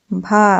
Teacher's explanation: भा जो है एक वो स्पर्श है, घोष है, महाप्राण है और ओष्ठ ध्वनि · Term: स्पर्श घोष महाप्राण ओष्ठ ध्वनि